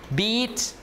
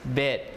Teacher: they are both High one is a little bit longer and more tense than the other one